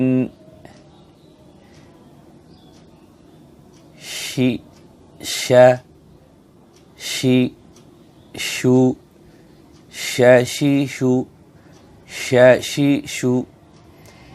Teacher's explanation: শিন উচ্চারণের সময় হালকা করে দাঁতের মাঝখানে ফাঁকা থাকবে এক আঙ্গুলের কম · শিনের মাখরাজ হলো জিহ্বার মধ্যখান তার বরাবর উপরে তালুর সঙ্গে লাগিয়া